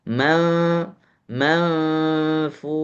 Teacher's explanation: Jadi bacanya man manfus bukan manfus tapi manfus masukkan ke dalam huruf fa manfus. Jadi seakan-akan huruf nun ini disembunyikan ke dalam huruf fa. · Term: nun bertemu dengan fa